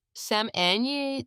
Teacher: salmon is pronounced salmon, the L is silent.